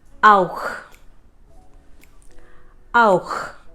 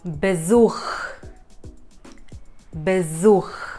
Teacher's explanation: Auch. So the CH at the end is ch from the epiglottis.